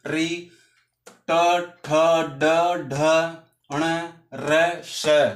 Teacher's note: हमारी जीहवा होती है ना वह हल्की सी मुड़कर झटके के साथ हमारी मूर्धा को स्पर्श करती है। इसलिए इनका इन वर्णों का उच्चारण स्थान मूर्धा माना जाता है।